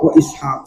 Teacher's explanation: Kalau dibaca waqaf wa Ishaq ya tetap dijadikan qalqalah